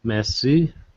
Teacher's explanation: Yeah, two syllables. The first syllable is stressed.